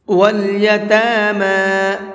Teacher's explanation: یہاں پر تا کو بھی اور میم کو بھی دونوں کو کھینچ کر کے پڑھیں گے، اس لیے کہ دونوں کے اوپر کھڑا زبر ہے۔